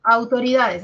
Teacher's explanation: Acá tenemos un diptongo au, de abierta a cerrada, es decir, es decreciente. Decrece, de abierta, decrece y se cierra.